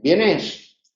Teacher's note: el tono acaba para arriba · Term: interrogativo